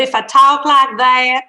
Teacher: I can show you in a Southern, and this is kind of a fake Southern accent, but if I talk like that, I'm changing pitch within my vowel. My vowel is changing pitch.